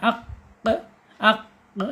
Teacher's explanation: Kemudian secara sifat yaitu asyiddah. Asyiddah ketika qf ini sukun ya dia akan tertahan suaranya. Aq aq ya tertahan suaranya. · Isti'la itu terangkat ya, lidahnya terangkat ketika mengucapkan huruf aq qof ya.